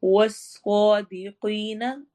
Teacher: واو ہونٹ گول ہوں گے اور سواد بھی موٹا ہوگا